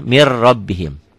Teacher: Tulisannya Min rabbihim ada n-nya bacaannya Mir rabbihim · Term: idgham bila ghunah